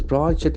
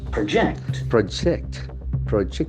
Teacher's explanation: so the verb will have the shift of syllable to the second part